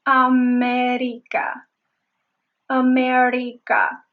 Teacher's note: She was using sort of like a mixture of the English and the Spanish R